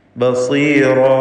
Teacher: ബസീറ ഈ പദത്തിൽ സ്വാദിന് തഫ്ഖീമാണ്, എന്നാൽ കസ്റായതുകൊണ്ട് കുറഞ്ഞ തഫ്ഖീം മാത്രമേ ഉണ്ടാവുകയുള്ളൂ. ഇസ്തിഅലാഇൻ്റെ ഹർഫ് സ്വാദ്, ഇതിന് കസ്ർ വരുമ്പോൾ തഫ്ഖീം ഏറ്റവും കുറഞ്ഞ ലെവലിലായിരിക്കും.